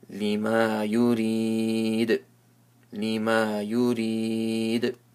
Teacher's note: And here, ya sakin with the zair before it, it's madul arith waqfi. Because after the letters of mud, there is a temporary sukun because of this ayah symbol. So stretch it three or five alifs.